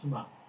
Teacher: So it's got this hard stop. Yeah, it's called a guttural stop.